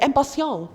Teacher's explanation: Otherwise, we don't pronounce the last consonant, like impatient. We don't say the T at the end.